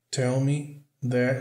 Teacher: Aqui o TH vai ter o som vozeado, que é quando a gente vibra as cordas vocais.